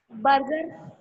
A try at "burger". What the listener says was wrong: Burger नहीं है. It is burger. आर की साउंड शॉर्ट होती है. बर्गर.